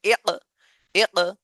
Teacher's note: এটা কিন্তু জজমের উচ্চারণ, কিন্তু কলকলার হরফ চলে আসছে বলে আমরা ধাক্কা দিচ্ছি।